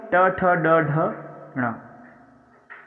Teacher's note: ये मूर्धा का मतलब होता है हमारे मुंह का जो ऊपरी हिस्सा होता है, दांत से ऊपर, वहां का स्पर्श करते हैं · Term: मूर्धव्य